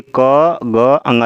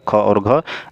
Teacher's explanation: क, ग, अंगा ये अल्प प्राण होता है, बाकी ये दोनों महाप्राण होता है, ख और घ। इसको शॉर्टकट में हम नहीं बोल सकते, जैसे क, ग, अंगा आराम से निकल गए, लेकिन ख, क, ख, ग, देखिए ख में जो बोलेंगे खूब आवाज़, मतलब वायु मुँह से निकलेगा, इसलिए महाप्राण है वो।